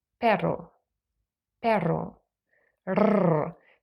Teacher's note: the IPA and it refers to a very different R sound we call it a Trill now this one does not exist in English but you can hear it in Spanish and also in Scottish English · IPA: /r/